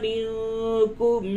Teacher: نون ساکن کے بعد کاف ہے اخفا ہوگا